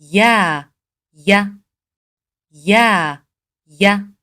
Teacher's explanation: درمیان زبان کا جو درمیانی حصہ ہے اس کو اوپر کی طرف اٹھاتے ہوئے تالو کے ساتھ لگاتے ہوئے اس کی ادائیگی کی جاتی ہے